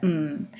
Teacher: say I'm going to produce an M that hmm and so the lips are closed so the potential areas of resonance can be that long nasal tract but there's also a side resonance and that is that oral